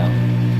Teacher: Ang panglimang patinig ay ang titik na mas maliit na bilog ng labi kaysa sa titik na o